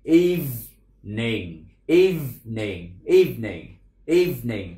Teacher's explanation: Âm đầu tiên là âm y dài, y rồi tới v liền, y, v, v, y, y, rồi phía sau âm tiết phía sau là ning, evening, evening, evening, evening, chứ đừng đọc là evening.